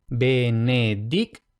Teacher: TI más otra vocal, en este caso la O, entonces la T se convierte en TS